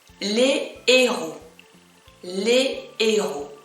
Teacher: It starts with le and I have H later, but this one is considered pronounced, because when I have the plural form, I do not make any liaison. I do not make any connection.